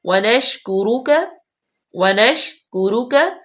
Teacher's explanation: شین جو ہے وہ حروف شجریہ میں سے ہے، یہاں پہ آواز پورے منہ میں پھیل جاتی ہے